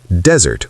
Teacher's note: Pronounced desert with stress on the first syllable.